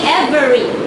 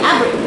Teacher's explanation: it is a deletion of a vowel in the middle of the word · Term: Syncope